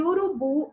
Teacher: onde o bu é a sílaba tônica